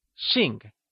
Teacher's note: Xing is spoken in the falling tone, also known as the fourth tone. Also remember that X is always spoken with a Shi sound in Mandarin.